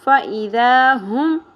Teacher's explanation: الف حرف مدہ ہے، 1 الف کے برابر کھینچنا ہے. فَإِذَا ہم. ہا اقصی حلق سے میم ساکن